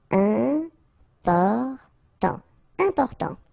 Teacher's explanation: you've got this EM, and after that it's a consonant, so it is here nasal